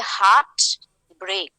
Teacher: both the syllables in the same foot will get the stress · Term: spondaic